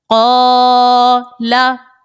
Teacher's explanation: یہاں پر دیکھیں قاف حروف مستعلیہ ہے, اس کو موٹا پڑا, اور الف سے پہلے زبر ہے چونکہ اسی لیے الف مدہ کا قاعدہ ہے, ایک الف کی مقدار اس کو کھینچ کر ہم نے ادا کیا